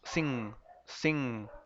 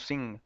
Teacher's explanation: cuando decimos la N, la mandamos para atrás y la vibramos y la hacemos vocal, utilizamos nuestras cuerdas vocales